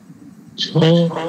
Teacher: ছ অঘোষ মহাপ্রাণ বর্ণ।